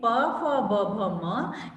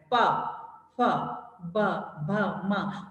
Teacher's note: होठ यूज हो रहे हैं तो इसको ओष्ठ्य व्यंजन कहा जाता है